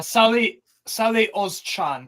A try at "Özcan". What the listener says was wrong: It's Salih Özcan. Not Cha, it's Jan. Change your C to a J. Özcan.